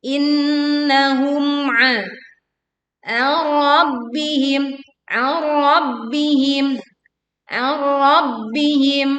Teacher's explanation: kita leburkan nun sukun ke ro tanpa disertai dengung